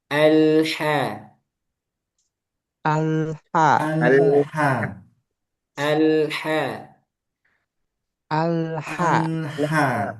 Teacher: ha fathah dijaga tipisnya alha alha alha alha alha alha ya jadi hati-hati ya di sini Ha makhluknya dijaga.